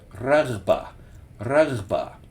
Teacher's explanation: There is no English R in this word. This is r at the very front of your mouth and then gh in your throat.